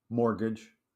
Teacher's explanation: there's a t in mortgage that's silent it's mostly silent yeah say it mortgage I didn't hear one